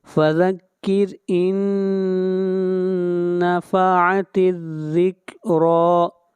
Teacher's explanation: ذال، را کو کھینچ کر پڑھیں گے ایک الف کے برابر، را کو موٹا پڑھیں گے